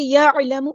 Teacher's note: عین کو مستحرک لیکن میڈل تھروٹ سے ادا کرنا ہے،